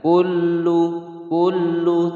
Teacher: ada lam bertasydid ditekan, tidak boleh didengungkan.